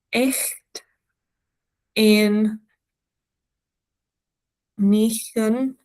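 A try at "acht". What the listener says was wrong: Yeah, so not echt. 8. Push your tongue down. 8. Because when you push your tongue down, air is escaping automatically anyway.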